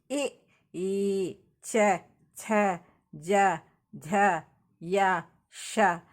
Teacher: ದವಡೆ ಮತ್ತು ನಾಲಿಗೆಯ ನೆರವಿನಿಂದ ಹುಟ್ಟುವ ವರ್ಣಗಳು ನಾಲಿಗೆ ಹೋಗಿ ದವಡೆಗೆ ತಗಲುತ್ತೆ ಕಂಠದಿಂದ ಶಬ್ದ ಬರ್ತಾ ಇರುತ್ತೆ ಎ ಅಂದಾಗ ನಾಲಿಗೆ ಹೋಗಿ ದವಡೆಗೆ ತಗಲುತ್ತೆ ಎ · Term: ತಾಳ್ವಿಯ